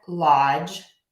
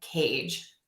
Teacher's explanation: two sounds said very quickly together, the D and the ja and the ja sound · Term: J sound